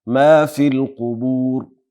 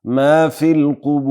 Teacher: لنډ مد او اوږد مد کول دواړه جایز دي